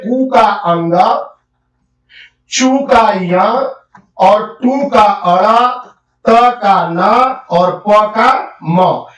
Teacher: सभी वर्गों का जो पांचवा वर्ण होता है उसका उच्चारण स्थान होता है नासिका नाक से उसका उच्चारण करते हैं